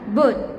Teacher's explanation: vowel U, as in boot, the tongue elevation is more posterior